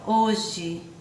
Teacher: escreve com é mas quando a gente pronuncia a gente pronuncia com ir